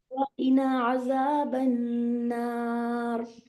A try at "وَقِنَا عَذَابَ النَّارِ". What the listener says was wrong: قنا عذاب النار. قنا الف مدیہ کو پراپر لو.